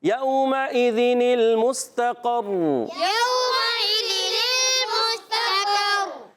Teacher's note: اور قاف موٹا ہے عرف مستعلیہ میں سے ہے، زبان کی جڑ تعلق نرم حصے سے ادا ہوگا اور را مشدد ہونے کی وجہ سے 2 مرتبہ پڑھی جائے گی · میم کو سین سے ملانا ہے، سین سیدھی کے ساتھ